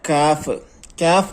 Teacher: നാവിന്റെ മുരടും അണ്ണാക്കും അഥവാ ഖാഫിന്റെ അല്പം താഴെ